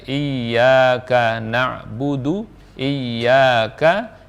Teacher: ya-nya panjang, K-nya pendek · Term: panjang pendek